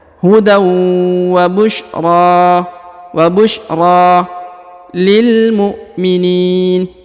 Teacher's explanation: huruf ra dipanjangkan 2 harokat karena di atas terdapat tanda alif kecil yang ini ya, maka harus dibaca panjang 2 harokat dan di depannya terdapat alif bengkok atau alif maksurah ya.